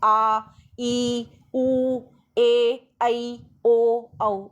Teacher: जिन स्वरों के उच्चारण में ह्रस्व से दुगना समय लगता है ना, और ज़्यादा हवा मुँह से बाहर निकलती है, वो दीर्घ स्वर कहलाते हैं।